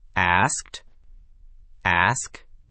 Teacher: Your tongue moves from the K position at the back of your mouth straight to the T position at the front. Quick, connected, no extra vowel.